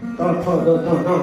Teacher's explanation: બોલવું હોય ત થ દ ધ ન તો જીભ દાંતને અડાડવી જ પડે. ત થ દ ધ ન બોલો, એને દંતવ્ય કહેવાય.